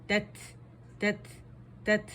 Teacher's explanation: اس میں سین کی آواز نہیں آنی چاہیے. تا فتح، تا سکون.